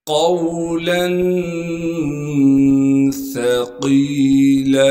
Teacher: سا کو نرم کر کے باریک کر کے ادا کریں گے، قاف کو موٹا کر کے پڑھیں گے اور قاف کو آگے یاء مدہ سے ملا دیں گے.